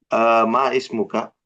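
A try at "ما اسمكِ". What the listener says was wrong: Jangan ma ismuka, langsung. Mas muka.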